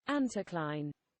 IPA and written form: ˈæntɪˌklaɪn (anticline)